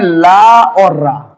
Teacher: दांत मूल से बोलते हैं ला और आर